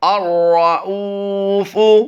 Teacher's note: را کو ہم دو بار پڑھ رہے ہیں مشدد ہونے کی وجہ سے